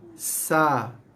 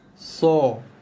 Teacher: Okey, jelas Okey. Cuma bezanya ialah huruf sa bunyinya nipis dan bunyinya merendah. So bunyinya lebih tebal dan juga bunyinya meninggi.